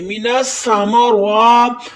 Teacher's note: مینسا میم کے اوپر زبر ہے، ماں بغیر کھینچے پڑھیں گے، مینسا ماں۔ را کے اوپر کھڑی زبر ہے، اس کو موٹا یعنی پر پڑھیں گے